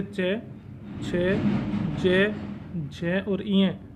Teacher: तालु को छूने के कारण ये सारे क्या होते हैं, तालव्य वर्ण होते हैं